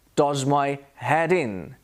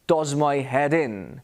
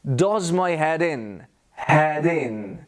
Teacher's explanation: between d and i on head in does my head in we move the d to the beginning of the next word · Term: connected speech